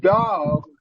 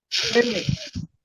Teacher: And the D, last D, sounds almost like a T, between T and D, but it's not exactly completely D, because these D's can be sometimes, like when you say dog, that D is very strong D.